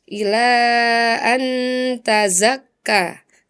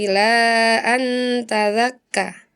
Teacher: Huruf Zai dua kali salah dibaca sebagai huruf Dza.